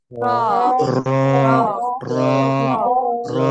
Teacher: জিহ্বার আগাটা উপরে দাঁতের মাড়ি থেকে লাগবে,